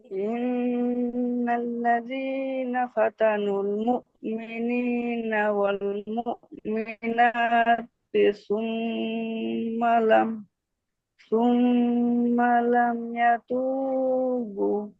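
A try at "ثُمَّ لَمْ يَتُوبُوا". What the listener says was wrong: বু টান হবে, এতু বু।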